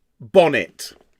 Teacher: So, 2 syllables, disyllabic, 2 syllables. The trochaic refers to the fact that the first syllable is stressed and the second is unstressed. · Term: disyllabic trochaic pairs